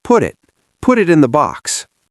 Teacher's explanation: This flap T happens everywhere in American connected speech, not just inside single words, but across word boundaries.